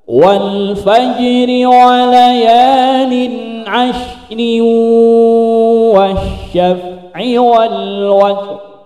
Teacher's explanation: Watr ro kasrah harus dibaca tipis, tapi karena waqaf maka menjadi tafkhim.